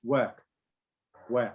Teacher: Remember that in British English, they will not pronounce the R. So they will say work, work.